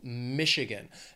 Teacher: the state has three syllables stress is on that first syllable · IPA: /ˈmɪʃ ɪ gən/